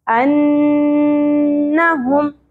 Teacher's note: ٹھیک ہے یہ دونوں سنگل حرکات ہیں زیادہ نہیں کھینچنی انہم نون مشدد کے اوپر غنہ ہوگا لیکن زبر کو زیادہ نہیں کشنا